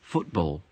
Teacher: he puts the stress on ball it should be on foot